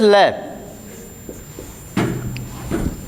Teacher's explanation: लय को जब बोलते हैं तो जीभ तालु को टच करती है और हवा साइडों से निकल जाती है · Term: पार्श्विक